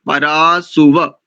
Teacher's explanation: इस सुवा में उकार दीर्घ नहीं है ह्रस्व है